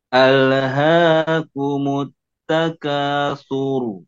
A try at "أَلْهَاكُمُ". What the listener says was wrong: Nah, sekarang lamnya tidak dipantulkan. Al-ha